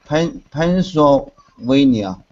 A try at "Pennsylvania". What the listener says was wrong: Vein. So it looks like van, but it's not pronounced the way it's written. It's vein. Pennsylvania.